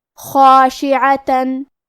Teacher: حرف العین کی ادائیگی حلق کے درمیان والے حصے سے ہے · خاء کو اور مد الف کو بھی بھاری آواز میں پڑھیں گے